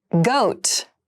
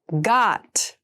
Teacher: Goat has the more closed sound, and got has the more open sound.